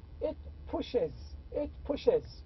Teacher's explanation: If the word ends with sha or ja, also if I add S, it is pronounced as IZ.